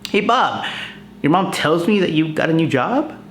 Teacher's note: so i'm using rising intonation to subconsciously of course ask bob to elaborate on the matter